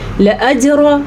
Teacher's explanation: لأجر پھر سے جیم کے اوپر ساکن ہے، پھر سے قلقلہ ہو رہا ہے۔